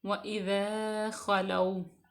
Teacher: اس کے بعد ہے وَإِذَا خَلَوْا، خواہ کو ہم پر پڑھیں گے کیونکہ یہ حروف مستعلیہ میں سے ہے، اور جو واو ہے اس کو ہم واو لین ہوگا کیونکہ واو ساکن سے پہلے زبر ہے، تو اس کو ہم نرمی سے ادا کریں گے